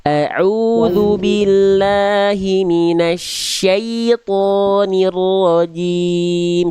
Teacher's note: Syai ketika ya sukun ada kan ada sya lalu ada ya sukun. Syai tengah lidahnya diangkat biar vokal i-nya jelas.